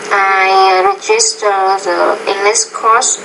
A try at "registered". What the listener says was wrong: you must say registered so there's a pattern in your pronunciation right now sometimes it's what we call grammatical word endings